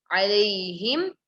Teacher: Ha should be from the throat.